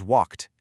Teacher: the ed d sounds like a sharp t.